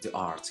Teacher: Es como que la E fuera muy suave, muy muda, sin esfuerzo, como si ni si existiera.